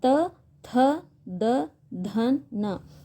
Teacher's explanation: ವರ್ಗ ಎನ್ನುವಂತದ್ದು ಹುಟ್ಟುತ್ತಾ ಇದೆ ಹಾಗೆ ತ ವರ್ಗ ದಂತ್ಯ ದಂತ್ಯ ಅಂದ್ರೆ ಏನಿಲ್ಲಿ ಹಲ್ಲುಗಳ ಸಹಾಯದಿಂದ ಉಚ್ಚಾರವಾಗುವಂತಹ ಅಕ್ಷರಗಳು